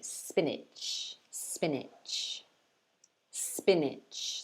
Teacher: two syllables sp niche but again we stress the first one more than the second